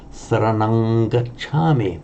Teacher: So the default mode is saranang, but here it remains a ng because that glides into the following sound